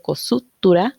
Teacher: De estas siguientes reglas solo nos vamos a enfocar en la síncopa como tal, en este caso es una pretónica, es decir, antes de la tónica, que por la fuerza de voz va a oírse más suave, como en el caso de cosutura, esa U anterior casi no suena. Luego tenemos otro tipo de síncopas como en los grupos consonánticos, como en sexta, que se vuelve sexta, quinta, que se vuelve quinta, y la velarización de la T implosiva, ¿verdad?